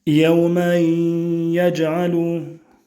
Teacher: On remarque qu'on introduit le tanwin dans le ya qui vient juste après, et il reste cependant bien évidemment la nasalisation